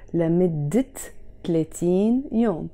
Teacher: because it's followed by the word 30, I have to pronounce the T مربوطة.